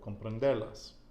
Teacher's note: now the emphasis comes on the penultimate syllable, comprenderlas.